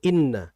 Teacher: kita jangan mengimalahkan, kita jangan melencengkan ke e ya. Yang betul adalah dengan memfokalkan i kasrah